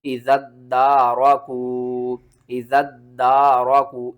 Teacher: ज़ाल को हमने दाल के साथ मिलाना है, ठीक है ना, और दाल को आगे अलिफ के साथ मिलाना है। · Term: तशदीद